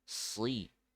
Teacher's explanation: sod ketika kasroh tetap dibaca tebal